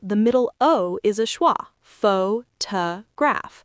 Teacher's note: Even in a big word like photograph, the middle O is a schwa, pho-ta-graph.